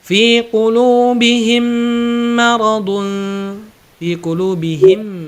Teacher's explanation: Ini jika mim sukun ketemu mim itu ditahan dulu. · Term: idgham mimi